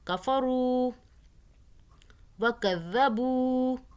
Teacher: واو ساکن آ رہا ہے، اس سے پہلے پیش آ رہا ہے، کھینچ رہے ہیں، مدہ ہو رہی ہے